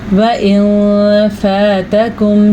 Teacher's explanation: وَإِن فَاتَكُمْ شَيْءٌ مِّنْ أَزْوَاجِكُمْ وَإِن فَاتَكُمْ، نون ساکن کے بعد حروف اخفاء میں سے فا آیا ہوا ہے، تو اس لیے یہاں پہ نون ساکن کی آواز کو چھپانا بھی ہے اور غنہ بھی کرنا ہے